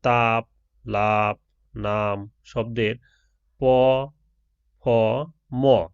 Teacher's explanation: দুই ঠোঁট অর্থাৎ উপরে ও নিচের ঠোঁটের সাহায্যে উচ্চারিত ধ্বনিগুলো হলো দ্বি-অষ্ট ধ্বনি। যেমন তাপ, লাপ, নাম শব্দের প, ফ, ম এই শ্রেণীর ধ্বনি।